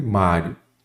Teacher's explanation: mestre Mário Qual é a sílaba tônica Mário é o má então a sílaba tônica é a penúltima